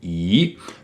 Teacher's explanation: There's a second tone, a rising tone